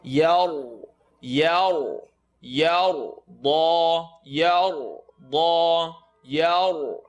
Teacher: Ya is light, ra is heavy because of the line on top.